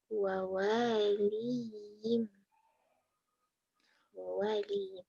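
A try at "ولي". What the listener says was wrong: Kok wawaliyim, waliyim, kok jadi wawaliyim?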